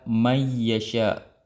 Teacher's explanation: Nun sakinah bertemu dengan ya mutaharrik. Ya yang berharakat. Terjadilah hukum idgam. Ya. Dan dibaca dengan idgam.